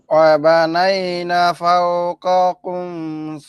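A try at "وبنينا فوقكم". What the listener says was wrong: ভাই একটু টান দিয়ে বলেন, একটু টান দিয়ে বলেন ভাই, একটু টান দিয়ে বলেন।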